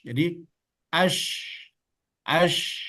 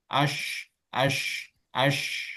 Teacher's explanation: Jadi ash, as, ash, as, ash, as. Ingat, dua bibir tidak perlu ikut serta karena dia huruf yang keluar dari lidah. · Ini kan bibir ini kan dia ada huruf tersendiri. Jadi dia hanya libatkan lidah saja, khususnya tengah lidah, ketika melafazkan huruf shin.